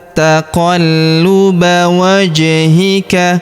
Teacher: Huruf ja berharakat sukun. Kita pantulkan